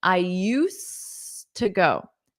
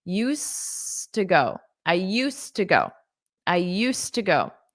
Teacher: that D is completely silent